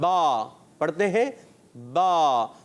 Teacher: बा में हमारे दोनों होंठ मिले तो बा का मखरज हुआ दोनों होंठ